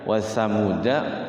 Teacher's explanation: tidak boleh dibaca panjang itu ya walaupun ada alifnya ya. Jadi tetap dia pendek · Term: sifrul mustadir